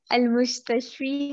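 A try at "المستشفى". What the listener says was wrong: Al-Mustashfa. Okay, यहाँ पर अगर dot होते तो फिर हम इसको मुस्तश्फी पढ़ते लेकिन यहाँ पर कोई भी dot नहीं है तो फिर हमने क्या पढ़ा इसको अलिफ पढ़ा मुस्तश्फा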